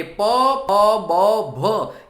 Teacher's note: બંને જે હોઠ છે એ એકબીજાને ભીડાય છે. બરાબર, એકબીજાને જોડાય છે ત્યારે જે વર્ણ ઉચ્ચારણ થાય છે એને ગુજરાતી ભાષામાં ઓષ્ટ વ્યંજન તરીકે ઉચ્ચારવામાં આવે છે, ઓષ્ટ વ્યંજન કહેવામાં આવે છે.